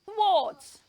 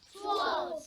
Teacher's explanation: h w a r t is pronounced thr th not th it has the voiceless th sound and the o sound and ends with a T sound